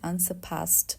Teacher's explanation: अब यहाँ पे भी we have two pronunciation. For British we need to omit the R sound